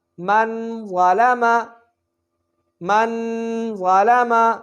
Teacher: غنہ ہوگا یعنی اخفا ہوگا، ضا موٹا پڑھا جائے گا